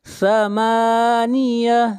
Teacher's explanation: یومئذ ثمانیہ، ذن اخفاء حقیقی، ثمانیہ، میم کو کھینچ کر پڑھیں گے 1 الف کے برابر